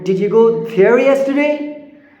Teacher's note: your Rising tone that is particularly for yes no question like you did you go there yesterday means yes or no